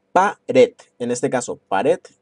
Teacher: la sílaba red va a ser la que donde va a estar recayendo la sílaba tónica. El acento prosódico va a ser prosódico porque no se acentúa.